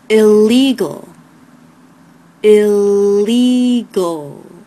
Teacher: the first L is light the second L is dark